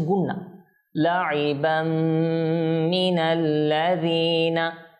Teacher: তো এখানে গুন্না করতে হবে এভাবে করে নাকে নিয়ে কিছুক্ষণ রাখতে হবে